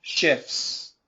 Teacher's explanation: Shifts, no T at all